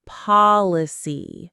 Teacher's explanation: Policy has the open, relaxed ah sound.